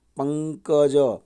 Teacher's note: દાખલા તરીકે જો પંકજ, તો પંગ એ પંગની ઉપર ભાર આવે છે, એ તીવ્ર અનુસ્વાર થયો